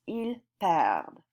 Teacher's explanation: You do hear the D in that, il perd. It's very quiet though.